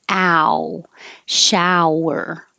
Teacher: So your jaw is going from open to closed, and your lips are going from back to rounded.